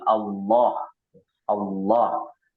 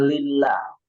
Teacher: Kalau fathah atau dhammah, maka itu dibaca tebal ya, seperti Allah. Allah. Beda dengan lillah. Lillah itu dibacanya tipis.